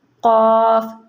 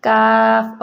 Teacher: قاف، اس کو موٹا پڑھیں گے، کاف، اور اس کو باریک پڑھیں گے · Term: حروف لہاتیاں